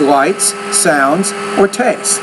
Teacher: the tone rises on a B and then it drops when you get to the last item there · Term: intonation